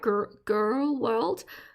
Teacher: I think what Americans do is throw the R to the front of their mouth